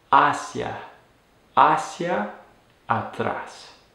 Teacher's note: pronounce it with the stress on that first syllable for the word hacia, and not hacia, which is actually a verb and not the preposition.